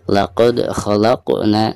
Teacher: Di sini ada huruf dal yang merupakan salah satu daripada huruf qalqalah, sekaligus posisinya ada di tengah-tengah bacaan ya, dan ketika sukun maka dihukumi qalqalah sugro ya, dan dibacanya harus dipantulkan dengan suara pantulan yang tipis ya